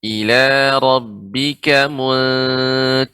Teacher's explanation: ro di sini juga tebal, tidak terlalu banyak getaran.